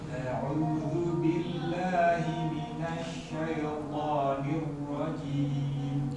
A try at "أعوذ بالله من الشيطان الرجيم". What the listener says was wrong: Masih ya-nya. Nah, ini ya-nya masih belum sembuh. Syai, ya, syai'i. Jangan diseret. Jadi bukan diseret terus. Ya, syaito.